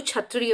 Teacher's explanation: मूर्धा से। तो कंठ और मूर्धा दोनों का प्रयोग होगा जब क्षत्रिय वाला छ आप उच्चारण करेंगे